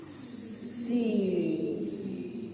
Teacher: The tongue is pulled backward, right? And I use most of the middle part of the tongue going up to my hard palate.